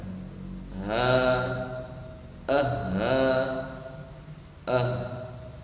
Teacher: ini merupakan tempat keluarnya makhraj hamzah dan ha yang berada di pita suara